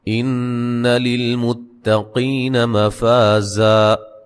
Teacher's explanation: نون مشدد پہ غنہ ضروری ہے، تا کو باریک پڑھیں گے، قی قاف کو موٹا ادا کریں گے، یا مدہ ہے، مفا فا الف مدہ ہے۔